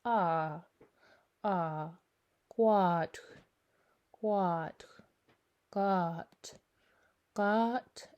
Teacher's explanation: Now if you're speaking with a Gitxsan accent, it's a bit of a harder O. It's not O, it's ah, ah, quad, quad, got, got, and habe ich, habe ich.